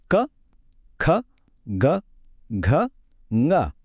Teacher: ಆ ಒಂದು ಕಂಪನ ಗಂಟಿನ ಹಿಂಭಾಗದಲ್ಲೇ ಅನುಭವಕ್ಕೆ ಬರ್ತಿದೆ ಅಲ್ವಾ ಅದೇ ಕಂಠ್ಯ ಧ್ವನಿಗಳ ಸ್ಪೆಷಾಲಿಟಿ